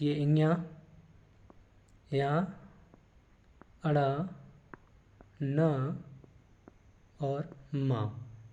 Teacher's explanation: प्रत्येक वर्ग का अंतिम अक्षर होता है, उन्हें अनुनासिक वर्ड कहा जाता है। और इनको बोलने के लिए नाक व मुख दोनों का ही सहारा लिया जाता है